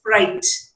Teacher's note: It's a trill or a roll when it when this r is preceded by a consonant.